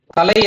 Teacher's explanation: நம்ம மேல்தாடையில ஒரு மேடு பள்ளம் இறங்குற அந்த ஆரம்பிக்கிற பகுதி இருக்கும் அந்த இடத்துல நம்ம நாக்கோட நுனி பட்டு உச்சரிக்கும்